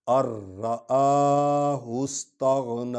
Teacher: ارآہ استغنی، ارآ کیوں پڑھ رہے ہیں کہ نون پر جزم ہے، را پر آگے شد ہے، تو ہم جزم والے حرف کو چھوڑ دیں گے، شد والے حرف پر آگے، یہ کلیہ ہے، یہ قاعدہ ہے، ٹھیک ہو گیا۔